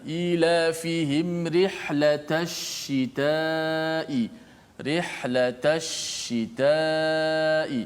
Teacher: Tafasyi martabat yang paling tinggi terjadi pada huruf shin yang musyaddadah.